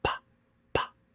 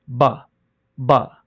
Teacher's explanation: B goes through the same motion of your lips, but it is voiced.